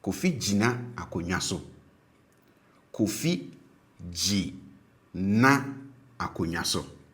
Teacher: But if it has more than a single syllable, like this one, then the first syllable tends to be pronounced with a low tone, and then the remaining syllable tends to be pronounced with a high tone